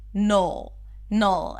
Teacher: the second syllable is an N sound, so bring the tongue up to touch the upper palate, and then pull it back to the L immediately. Null. And it's a dark L, so you want to round your lips just a bit, and then create this tension in the back.